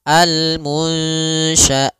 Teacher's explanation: Kemudian pada lafal munsya'atu di situ ada nun sukun bertemu dengan huruf shin, yaitu suara nunnya harus dibaca samar, maka di sini kita namakan dengan bacaan ikhfa.